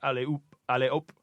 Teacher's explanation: it sounds like op in French because you don't pronounce the h